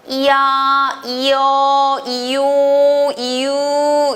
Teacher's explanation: 이에서 아가 합쳐져서 이야 이렇게 되고 이에서 오가 합쳐서 이요 이런 식으로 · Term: 이중모음